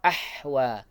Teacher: untuk ahwa haknya ini sukun, maka dia terlepas dulu sifatnya ar-rakhawah. Sifat huruf haknya itu ar-rakhawah, maka dilepaskan dulu baru pindah.